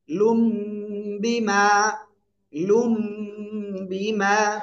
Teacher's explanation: ওই নুন সাকিনকে আমরা কি করব, উচ্চারণ না করে আমরা মিম পড়বো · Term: ইকলাব